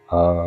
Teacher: കണ്ടം ഒരല്പം താഴ്ത്തി അതിന്റെ ആവൃത്തിയെ കുറച്ചു കൊണ്ടാണ് ഉച്ചരിക്കേണ്ടത് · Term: അനുതാത്തം